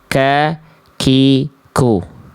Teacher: Ini kaf pangkal nempel antara langit-langit lunak dan keras tuh ya. Ini kaf maka keluar percikan nafas. Kaf itu lebih luar.